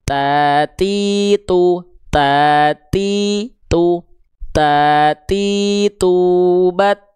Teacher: lidah kita disentuhkan ke pangkal gigi seri atas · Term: huruf ta